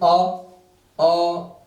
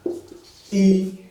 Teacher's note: अवृत्तमुखी स्वर, अवृत्तमुखी स्वर यानी जिनमें होठ जो है गोल न होकर क्या होते हो, फैलते हो